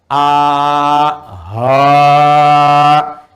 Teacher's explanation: Tapi ha nanti mengambil nafas cukup panjang. Jadi udaranya cukup panjang kita keluarkan.